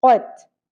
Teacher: قوف زبر تا ساکن قوف کو پر پڑھنا ہے. قت اور نرم تالو سے.